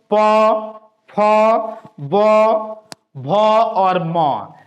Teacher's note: प, फ, ब, भ और म, ये पांचों जो वर्ण है, जो स्पर्श वर्ण का भाग है, इन पांचों वर्ण का उच्चारण स्थान क्या होता है? तो ओठ होता है